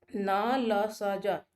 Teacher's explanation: न, ल, स, ज ये वर्तस्य ध्वनियाँ हैं, यानी कि इनके उच्चारण में हमारी जिह्वा जो है ऊपरी मसूड़ों से स्पर्श कर जाती है